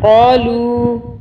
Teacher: یہاں پہ ہم 3 الف کے برابر کھینچیں گے